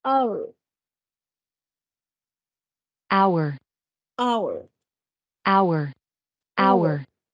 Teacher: empieza con la H la escritura pero su sonido es de una vocal